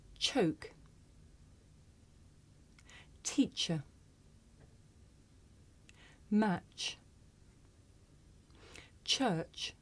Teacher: this is a voiceless consonant you can hear it at the beginning of the word choke